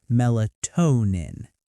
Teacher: The stress falls on toe.